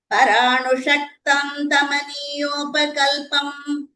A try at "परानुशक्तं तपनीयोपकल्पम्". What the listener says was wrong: All your dental nakaras are becoming murdhani nakaras. Paranu, you're saying paranu.